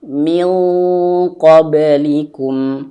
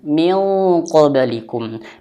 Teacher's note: nun mati jumpa dengan huruf qof maka bunyinya seperti eng tapi dia tebal